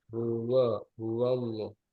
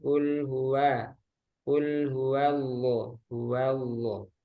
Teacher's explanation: Coba huwa tipis wawnya.